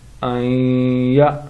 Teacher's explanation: یہ حمزہ ساکنہ ہے تو جھٹکا کے ساتھ پڑھیں گے